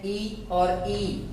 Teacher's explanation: ई और ई बोलेंगे तो तालु से आवाज आती है। तो इनका उच्चारण स्थान हुआ तालु।